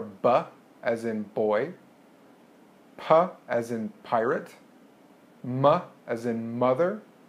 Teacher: Bilabial sounds are sounds that are made with both of the lips.